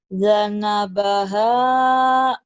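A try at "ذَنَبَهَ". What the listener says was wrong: Za. Zanabah. Bukan janabah. Za. Zana. Za. Ada unsur D-nya ya. Kalau za, unsur Z. Ini za. Unsur DJ. Zalnya masih ada.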